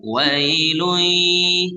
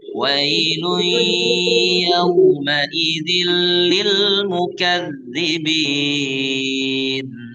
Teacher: ini kita mengidghamkan memasukkan suara tanwin ke huruf ya setelahnya yaitu huruf ya. Maka ini disertai dengan gunnah dengung. Wailui. Jadi kita sudah sudah ada dengung, ada suara sengal di hidung. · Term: idgham bi gunnah